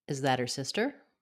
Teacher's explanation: We're going to flap the T, drop the H, and run that all together in one linked phrase.